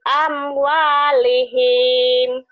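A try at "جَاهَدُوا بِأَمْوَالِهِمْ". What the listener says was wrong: pendek. Jahadu bi amwalihim. Gak ada yang panjang.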